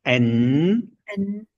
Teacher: you roll your tongue up to your the roof of your mouth, and it's nasal.